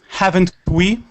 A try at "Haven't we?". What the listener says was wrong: Haven't we? Haven't we? It's a different intonation. Haven't we?